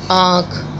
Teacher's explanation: अनुनासिक जिसमें नाक और मुख दोनों से आवाज़ निकलती है